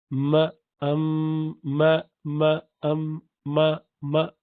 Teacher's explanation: It has to be There has to be both ways sound. Little bit from the lips touching each other, halfway through that, and half of that sound comes from the nostrils. So ma, ma, ma, ma.